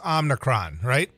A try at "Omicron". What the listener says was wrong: I think it's Omicron. You threw an N in there.